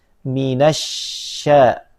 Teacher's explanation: Billahi minas syaiton ada sifat tafasy yang menyebar udaranya minassya jangan sampai di monyongkan menjadi saiyo ku tapi syaiton nirojim